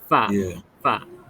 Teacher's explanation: okey makhraj huruf Fa Dekat mana Hari Tu kita belajar bibir bibir bawah kena dekat gigi atas kan